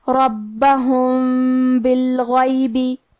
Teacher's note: کلمت بالغیبی میں حرف الغین کی ادائیگی حلق کے اوپر والے حصے سے ہے، اور کیونکہ غین حروف التفخیم میں سے ہے تو ہم یہ حرف کو موٹی آواز میں پڑھیں گے · کلمت بالغیب، با حروف الاخفاء الشفوی میں سے ہے اور اخفاء کا معنی ہے چھپا دینا، تو ہم میم ساکن کو چھپاتے ہوئے لیکن غنہ کے ساتھ یہ حکم کو ادا کریں گے۔